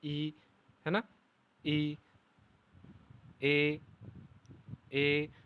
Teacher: देखिए अग्र स्वर, अग्र स्वर में जिह्वा के आधार पर ई, ई, ए और ए, ये जिह्वा के अग्र स्वर यानी जो जीभ है और उस जीभ का जो आगे का हिस्सा है उसके उसके स्पर्श से इनका उच्चारण हो रहा है